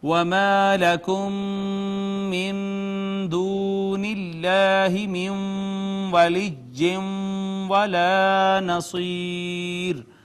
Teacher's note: میم ساکن کے بعد دوسری میم آ گئی، ادغام شفوی ہے